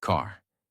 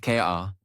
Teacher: In American English, the R sound is strong and clear. It is not silent. It is not weak. It is fully pronounced. Your tongue moves slightly back. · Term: American R sound